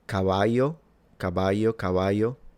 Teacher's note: Okay, now the way he pronounced the double L sounds Latin American, because I believe that in Castilian Spanish from Spain, please correct me if I'm wrong, this would have been pronounced a bit like a Y